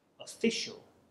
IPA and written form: əˈfɪʆəl (official)